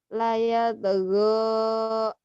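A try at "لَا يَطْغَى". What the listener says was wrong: Kurang bulat. La yatgo la yatgo la yatgo. la yatgo.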